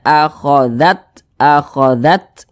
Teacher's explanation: huruf ta ini dia memiliki sifat hamas. Jadi ketika mengucapkan huruf T-nya itu ya, ada nafas yang mengalir.